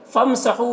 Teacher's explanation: हु में वाव मद्दा है, इसे 1 अलिफ के बराबर खींच कर पढ़ेंगे